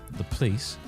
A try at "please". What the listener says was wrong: Please. Please with no O. Please.